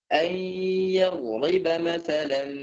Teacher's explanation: Yang jelas dia gunnahnya 2 harokat.